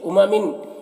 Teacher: امامن تنوین میں اخفا ہو رہا، تنوین کی آواز کو ناک میں چھپا کر پڑھیں گے